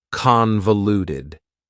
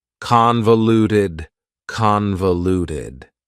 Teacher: Convoluted also has 4 syllables, and the stress is on the first syllable